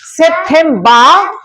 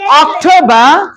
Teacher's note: শেষের আর উচ্চারণ করব না